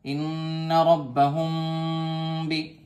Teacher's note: یہاں پر غنے کے ساتھ اخفا ہو رہا، ناک میں بھی آواز جا رہی ہے اور تھوڑی دیر ناک میں آواز چھپا بھی رہے ہیں۔ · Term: اخفاء شفوی